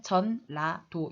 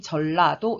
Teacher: 자, 뭐랑 뭐가 만나서 니은과 리을이 만나서 결국은 리을로 바뀌었단 말이에요. 니은과 리을이 만나서 니은 소리를 리을로 바꿔서 전라도라고 발음을 해준다고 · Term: 자음 동화